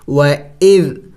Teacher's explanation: و اذ جم کر کے پڑھیں گے، ہلائیں گے نہیں